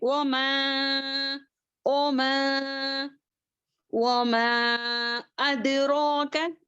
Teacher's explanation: وما میں منفصل ہے، 4 حرکات کے برابر کھینچیں گے